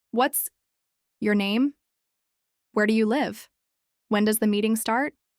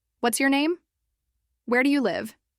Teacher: Say each of these slowly and let your voice fall at the end. It should feel like your question is landing gently, like putting a period at the end of a sentence.